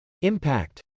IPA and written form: .ɪmpˈækt (impact)